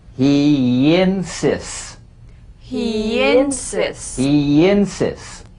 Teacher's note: Linking words that end in the Y buzz. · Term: The Y link